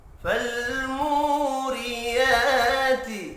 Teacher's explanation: مو واو مدہ ہے، ایک الف کے برابر کھینچ کر پڑھیں گے